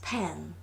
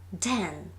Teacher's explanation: p is voiceless, fortis, but d is voiced, lenis.